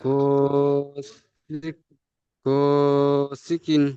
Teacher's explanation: গসিকিন নয়, গ টান দিতে হবে এক আলিফ, আলিফের ডান দিকে জাবার, গইন আলিফ জাবার ও, এক আলিফ টান হবে।